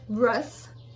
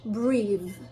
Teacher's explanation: when it's a noun, it's voiceless, but when it's a verb, it's voiced.